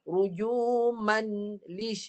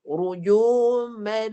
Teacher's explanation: Baris tanwin kedua dah tak ada. Dia masuk pada lam sebelahnya.